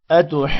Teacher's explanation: دونوں کو 5 سیکنڈز لمبا کرنا ہے، اور نون مشدد ہے، جب ہم جیم کو نون کے ساتھ ملائیں گے تو غنہ کریں گے، مد کو لمبا کرتے ہوئے آخر میں نون پر غنہ کرنا ہے